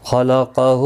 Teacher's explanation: خا مستعلیہ ہے، قاف بھی مستعلیہ ہے، دونوں پر پڑھے جائیں گے